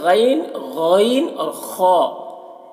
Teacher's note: गन और ख इनका मखर इब्तिदा हलक है मुह की तरफ वाला हिस्सा